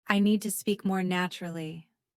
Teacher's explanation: Notice that the words need, speak, and naturally are stressed.